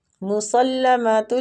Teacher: سین جو ہے یہ بریک سیٹی والا ہوتا ہے